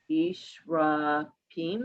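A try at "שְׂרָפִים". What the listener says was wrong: But this is a sin. The s, not she. S, like snake.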